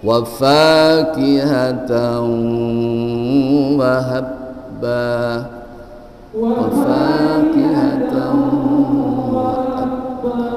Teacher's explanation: tanwin dengan wawu idgham disertai dengan suara sengau, suara ngidong, suara ngindong, suara hidung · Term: idgham gunnah